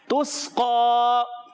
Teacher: سین کو سیٹی کے ساتھ باریک رکھ کے ادا کریں گے. اور پیارے بچوں قاف کی ادائیگی پر کر کے پڑھیں گے.